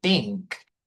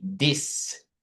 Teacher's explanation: the TH sound is pronounced as a T or a D, like it has a strong pronunciation